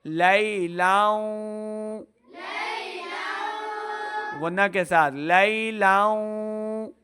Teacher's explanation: آگے واو حرف یا ملون سے ہے تو لام کو واو کے ساتھ ملائیں گے، غنہ کرتے ہوئے ادغام کا قاعدہ ہے